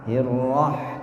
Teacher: Huruf ha ini keluar dari tenggorokan bagian tengah. Kalau terlalu ke atas, ya, menjadi kha. Ya. Kalau terlalu ke bawah menjadi ha, gitu ya.